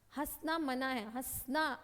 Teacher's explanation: ह मुंह और नाक दोनों से सेकंड्स के लिए आवाज आई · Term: चंद्र बिंदु